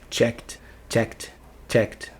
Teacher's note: Como não é vozeado, vai lá para a terceira coluna e faz um som de T de tatu no final.